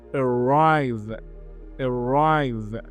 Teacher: It is two syllables and the stress is on the second syllable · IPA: /əˈraɪv/